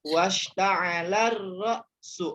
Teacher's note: Langsung dia ke huruf ra ya. Huruf lamnya tidak dibaca. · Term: Al syamsiah